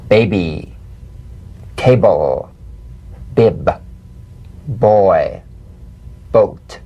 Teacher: Play this on the springing away from contact, not by pressing the lips together. You'll feel a gentle voiced pulsation on the lips like a delicate, crisp tap. Now, tap the drum beat b in these words.